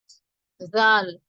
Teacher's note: நாவின் நுனி பகுதி, நாவுடைய நுனி பகுதி மேல் நடுப்பற்களின் விளிம்பை தொட்டு விலகும் போது உண்டாகிறது. நாவுடைய நுனி பகுதி, நாவுடைய நுனியில கை வச்சு பாருங்க.